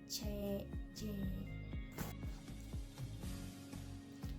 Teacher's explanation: bunyi laminopalatal bunyi yang dihasilkan oleh lamina dan langit-langit keras